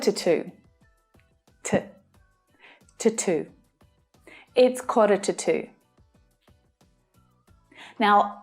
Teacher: to is the stressed form but when spoken this word is usually unstressed